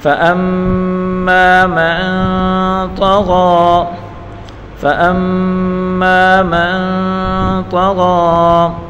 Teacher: فَأَمَّا مَن میم کو نون کے ساتھ ملا کر پڑھیں گے۔ نون ساکن کے بعد اخفا کا حرف طا ہے تو یہاں گنہ کر کے پڑھیں گے۔ فَأَمَّا مَن طا کے اوپر بڑی حرکت ہے، بغیر کھینچے پڑھیں گے اور غین کے اوپر کھڑی حرکت ہے، اس کو ایک الف کی مقدار کھینچ کر پڑھیں گے اور طا اور غین دونوں پور حروف ہیں۔